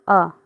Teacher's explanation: जीभ का मध्य भाग काम करता है, उन्हें मध्य स्वर कहते हैं।